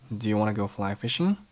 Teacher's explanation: Do you wanna 都是弱读，其中 wanna 就是 want to 的缩写，读成了 wanna wanna。后面 go fly fishing 语调上扬